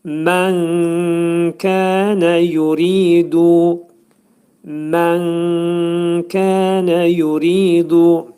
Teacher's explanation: kəf hərfinin məxrəci dilin sonu və dilçəyin axırıdır